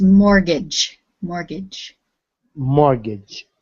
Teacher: take out a mortgage we don't pronounce the t